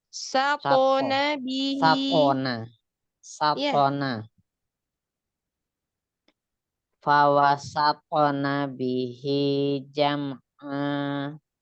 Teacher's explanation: Sinnya tidak tebal. Yang tebal kan po.